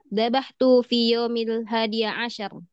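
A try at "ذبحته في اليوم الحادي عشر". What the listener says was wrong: ya, Zabah tuhu fil yaumil hadi asyar. Zabah tuhu ada punya. Fil yaumil hadi hadi asyar. Fil. dia alif lam, ada alif lam. Ah, fil yaumil hadi asyar. Fil.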